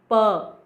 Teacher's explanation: बाइलैबियल means कि इस sound के प्रोडक्शन के वक्त हमारे दोनों लिप्स यूज होते हैं। प, the lower lip is the active articulator and the upper lip is the passive articulator. · Means कि वॉइसलेस का मतलब कि जब इन साउंड्स को प्रोड्यूस करते हैं तो हमारा ग्लॉटिस वाइड होता है, हमारे वोकल कॉर्ड के बीच काफ़ी स्पेस होता है और एयर आराम से पास कर जाता है, वोकल कॉर्ड्स को बहुत वो डिस्टर्ब नहीं करता, वाइब्रेट नहीं करवाता. नाउ बाइलैबियल मीन्स कि इस साउंड के प्रोडक्शन के वक्त हमारे दोनों लिप्स यूज होते हैं।